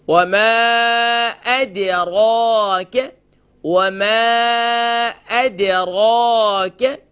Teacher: وَمَا أَدْرَاكَ دال لائٹ، را فل ماؤتھ · اب یہاں ہم دال کو ہم لائٹ کرنا ہے، ہم یہاں اس کے اوپر پڑھتے وَمَا أَدْرَاكَ، ادو نہیں ہے، وَمَا أَدْ دال پر قلقلہ ہوگا، را کو ایک الف کی مقدار کھینچیں گے، کیف کو شارٹ ساؤنڈ کریں گے.